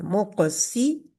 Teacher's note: काफ के ऊपर कलकला होगा लेकिन छोटा कलकला होता है मु काफ मोटा लेटर है और कलकले का लेटर है मुकस